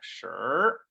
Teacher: what's actually happening in the mouth is your tongue is rolled up like an R